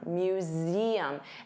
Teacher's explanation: notice you have that voiced Z sound